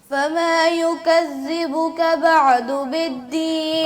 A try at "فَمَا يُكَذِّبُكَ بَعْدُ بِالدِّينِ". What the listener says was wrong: عین کو ہلائیں نہ اور ذال کو درست پڑھیں. بعد نہیں، باع یعنی عین پہ قلقلہ ہو گیا، یہ نہیں ہونا، بعد، اور زال کے اوپر بھی ٹھہراؤ پیدا کریں، اس کو واضح کریں، یکذبک،